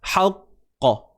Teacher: jangan kita tahan suara qalqalah tu. Jangan bunyi hamzah.